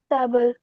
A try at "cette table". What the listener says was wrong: Très bien.